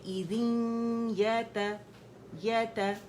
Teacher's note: تھوڑی آواز منہ سے زیادہ ناک سے باہر آئے گی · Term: ادغام